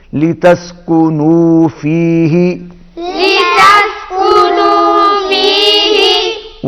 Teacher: لتسکنوا آواز نو پر ناک میں نہیں جائے گی